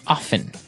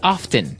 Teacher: They kind of leave out the strong T sound.